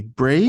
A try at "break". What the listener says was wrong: No k. No k. Break.